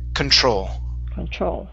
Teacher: stress is at the end of the word